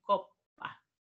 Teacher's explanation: Se pronuncia en dos tiempos esa doble P. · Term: geminadas